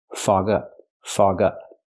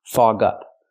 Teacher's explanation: It's a phrasal verb, so you stress both words.